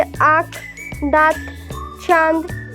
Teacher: इसको नाक व मुंह से बोला जाता है। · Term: चंद्रबिंदु